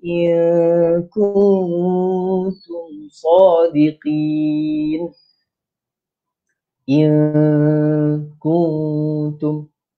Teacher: Nun mati bertemu dengan huruf kaf perlu pada dengung. Dengung sebanyak sepanjang ataupun untuk tempoh dua harakat.